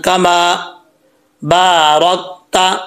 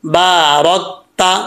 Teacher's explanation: را کے اوپر زبر ہے، اس کو پر پڑھا جائے گا یعنی موٹا پڑھا جائے گا